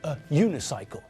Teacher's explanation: If we're talking about a bicycle with only one wheel, then we're talking about a unicycle, not an unicycle, because the word sounds like it starts with a y sound, which means that it sounds like it starts with a consonant, either J or Y.